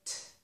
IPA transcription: t